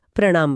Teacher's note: प्र प्लस नाम बोलते समय जब जीभ प्र के र के लिए मुड़ती है तो जब तक वो न तक पहुंचती है वो पूरी तरह से सीधी नहीं हो पाती। मुड़ी हुई अवस्था में वो मसूड़ों के ऊपर टकराती है जिससे स्वाभाविक रूप से न की जगह न का उच्चारण हो जाता है और शब्द प्रणाम बन जाता है।